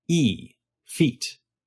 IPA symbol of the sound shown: i